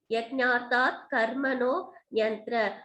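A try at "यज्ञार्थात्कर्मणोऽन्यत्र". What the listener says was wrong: அந்த ஆப்போசிட் இருக்குன்னா ஏ போட்டுடுங்க, அப்ப அன்யத்ரன்னு வரும்.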